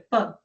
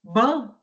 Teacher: o pã ele é surdo. Por quê? Porque não vibra.